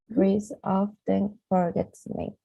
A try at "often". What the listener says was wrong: Often. No, the T is almost not there, not often.